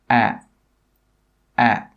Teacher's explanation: your tongue should be at the bottom of your mouth, and the sound, it comes from the very bottom of your mouth at the front. A. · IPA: æ